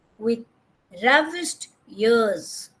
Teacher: So with is unstressed, R-A-V is stressed. Again, I-S-H-E-D, unstressed, ears is stressed.